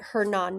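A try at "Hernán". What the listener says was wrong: actually Hernan. So when in Spanish, you don't pronounce the H, so it's Hernan.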